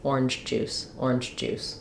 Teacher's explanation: it sounds a little bit partially unreleased and partially like it may come out more like sounding devoiced like a CH sound orange juice orange juice and then I do a full J